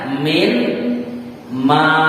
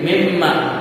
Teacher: Berarti ada nun yang hilang, gantinya tasjid mim, namanya idgham ya. Masuk, lalu ma panjang, alifnya dibuang jadi mimma.